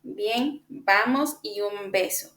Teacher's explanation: una realización oclusiva del fonema B que ocurre al inicio de una palabra después de una pausa o tras una consonante nasal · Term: alófono oclusivo B